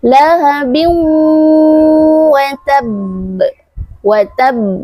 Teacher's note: Nah, setelah huruf ba yang berbaris kasrah, tanwin, setelahnya huruf waw. Jika ada tanwin bertemu dengan huruf waw, maka hukum bacaannya di dalam Al-Quran adalah idgham bi gunnah. Jadi dimasukkan di dalam huruf waw.